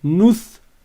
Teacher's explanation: Quand tu mets un soukoun, tu t'arrêtes sur la consonne du tha. Tu dis nouth.